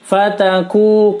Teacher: kunya dibaca panjang, dummah diikuti waw sukun